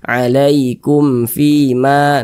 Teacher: Tapi ada mim sukun setelahnya huruf fa seperti ini, bukan huruf ba, bukan huruf mim, semua hukumnya namanya izhar syafawi. Karena dia izhar dibaca jelas, tidak berdengung, baca pendek saja.